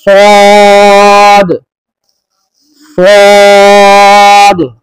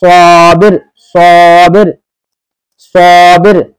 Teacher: सौद सौद, तो ऐसे सौद थोड़ा मोटा करेंगे। जो हमने सीन में आवाज थी उसी आवाज को थोड़ी सी मोटी कर देंगे